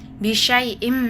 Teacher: meleburkan tanwin ke huruf mim. dan panjangkan dengan dengung sekitar dua harakat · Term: idgham bigunah, idgham bigunnah